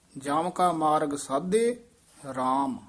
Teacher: ਸਾਧੇ ਤੇ ਠਮਕ ਲਾ ਦੇਣੀ ਹੈ।